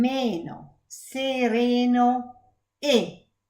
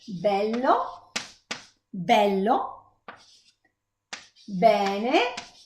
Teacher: So this one is closed, E, sereno, and this one is open, E, bello.